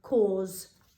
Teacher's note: it sounds like almost like a Z sound at the end